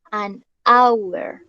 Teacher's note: Y por ende, pues se dice an porque el sonido de hour o de honor suena como el sonido de una vocal a pesar de que tenga H